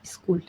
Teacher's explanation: यहाँ एक extra vowel sound आई लग जाता है हिंदी इन्फ्लुएंस की वजह से।